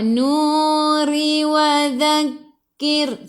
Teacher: Sebelum ra baris bawah kena senyum. Kena baca dengan nipis. Tarqiq nama dia.